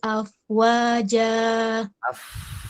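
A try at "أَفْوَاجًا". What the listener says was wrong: Ngalir dulu fa-nya baru wa. Jangan berhenti fa-nya. Jangan afwaja. Ini siap-siap masuk wawu. Afwaja, fa-nya tetap ngalir.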